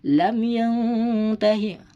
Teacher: Harus dibaca dengung nun matinya.